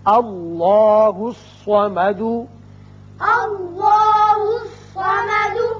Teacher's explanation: الف پر زبر ہے لہذا اس میں اللہ کا لام پر کر کے پڑھا جائے گا. اسی طرح صاد حروف مستعلیہ میں سے ہے، یہ پر ہوگا.